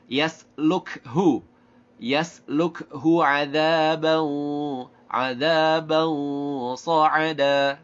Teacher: Ini hamas. Kafnya hamas, ha-nya juga hamas, lamnya jahar.